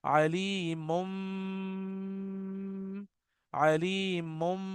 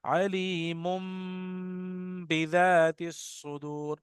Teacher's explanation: इसको आप मुन नहीं कर सकते, मुम करना पड़ेगा। आपके दोनों होंठ मिलेंगे, और जब आप होंठ मिलाकर इसको तरन्नुम बनाएंगे, तो आपके होंठ में वाइब्रेशन होगी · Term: इख्फा